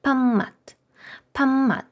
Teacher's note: Якщо після літери п йдуть такі, знаєте, назальні літери м і н, то і п ми теж оглушуємо до варіанту із тим, що ми її вимовляємо як м.